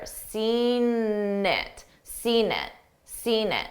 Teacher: I use that that N sound to connect the 2 words together.